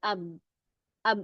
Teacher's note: maksudnya bertemunya kedua bibir ya. Saling bertemu kedua bibir itu sukunen.